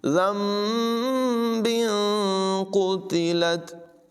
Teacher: और यहाँ पर तनवीन के बाद क़ाफ़ हरूफ़ इख़फ़ा में से है तो तनवीन के नून में भी गुन्ना करेंगे, इख़फ़ा करके पढ़ेंगे और क़ाफ़ की आवाज़ पुर होगी